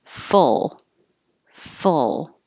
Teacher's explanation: you don't round your lips because the vowel is as in took. And so keep your lips straight.